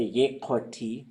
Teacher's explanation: You could say ye koti, and that's a high toned ye.